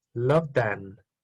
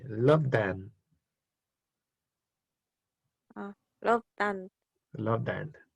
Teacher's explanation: Loved is a verb that the ED is pronounced like a D.